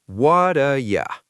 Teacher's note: It's looking for the T at the end of what. But in what ya, the T has become a soft D sound. We call this a flap.